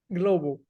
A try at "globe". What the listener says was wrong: Globe. Globe. So you have to avoid saying gul, gul. So it's just one time, just one syllable, not two syllables.